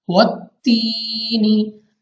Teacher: या साकिन से पहले जेर है, या मद्दा हमने खींच कर पढ़ना है 2 सेकंड तक या 2 अलिफ तक हमने इसको लंबा करना है।